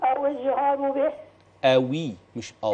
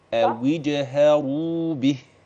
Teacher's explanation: أبين كسرة الواو، ده رقم واحد، وأبين المد الطبيعي رقم اثنين